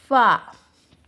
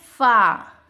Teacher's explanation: فا کا مخرج نیچے کے ہونٹوں کے گیلے حصے اور سامنے کے اوپر والے 2 دانتوں کے کنارے سے ادا ہوتا ہے. جو اپنے دانت ہوتے ہیں اور جو اپنا نیچے کا جو یہ ہونٹ گیلا والا ہونٹ ہوتا ہے، جہاں سے ہم کو کچا کچا نظر آتا ہے، وہاں سے جو ہے اس کا مخرج ادا ہوتا ہے.